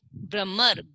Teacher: भ के बाद में हमें र की आवाज आ रही है और वो भी पूरा र सुनाई दे रहा है